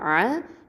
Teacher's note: ஐன் ஃபத்ஹா அ, இது வசத்துல் ஹல்கு நடுத்தொண்டை எழுத்து